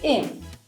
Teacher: It’s also common to cut the H in the word “him”, so we would say “im”.